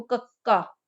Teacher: ਕਾਂਠੀ ਧੁਨੀਆਂ ਦੇ ਉਚਾਰਨ ਵੇਲੇ ਜੀਭ ਦਾ ਪਿਛਲਾ ਪਾਸਾ ਕੋਮਲ ਤਾਲੂ ਨਾਲ ਸਪਰਸ਼ ਸਥਾਪਿਤ ਕਰਕੇ ਸਾਹ ਦੀ ਹਵਾ ਨੂੰ ਰੋਕਦਾ ਹੈ · ਜਿਹੜੀ ਜੀਭ ਆ ਉਹ ਕੋਮਲਤਾਲ ਨੂੰ ਸਪਰਸ਼ ਕਰਦੀ ਹੈ ਤਾਂ ਉੱਥੇ ਜਿਹੜੀ ਆਵਾਜ਼ ਆ ਉਸ ਤਰੀਕੇ ਦੇ ਨਾਲ ਰੋਕੀ ਜਾਂਦੀ